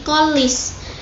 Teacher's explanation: fonem N dipengaruhi oleh fonem L yang terletak sebelum fonem N tersebut. Nah, masih sama dengan asimilasi progresif tadi.